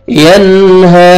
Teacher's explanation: نون ساکن کے بعد حروف حلقی میں سے ہاں, یہاں پہ آپ نے اظہار کرنا ہے. جلدی پڑھیں گے.